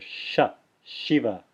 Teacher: the palatal sibilant sh, as in Shiva, teeth fully closed together